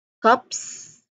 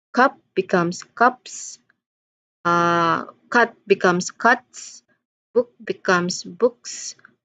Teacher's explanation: So the suffix here is just a soft hissing.